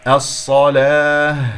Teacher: والمقيمين، قاف مفخمة مرتبة أخيرة. الصلاة، صاد مشددة، صاد ساكنة ثم صاد مفتوحة، صاد الساكنة رابعة، صاد المفتوحة ثانية، فانتبهوا.